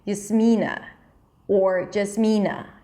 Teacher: Americans say Jasmina, they change the primary stress because you put the stress on the second syllable